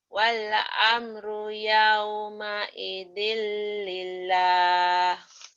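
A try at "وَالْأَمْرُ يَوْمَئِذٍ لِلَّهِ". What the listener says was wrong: Lilnya ditahan.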